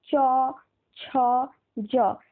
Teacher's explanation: জিভটা তালুকে স্পর্শ করছে, ওই জন্য এটাকে আমরা বলবো তালব্য